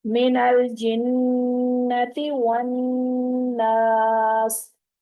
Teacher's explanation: तो नून मुशद्दद पे 2 हरकत जितना हम रुकेंगे, आवाज को हम नाक में रोक के रखेंगे, गुन्ना करेंगे।